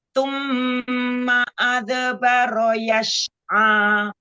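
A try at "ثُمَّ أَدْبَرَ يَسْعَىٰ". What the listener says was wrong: Huruf sinnya jangan seperti shin. Summa adbara yas'a.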